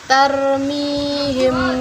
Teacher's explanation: apabila huruf mim sukun bertemu dengan huruf ba cara membacanya yaitu samar-samar dan didengungkan dibaca sebanyak dua harkat atau satu Andir disini terdapat dalam Qur'an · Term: Ikhfa Syafawi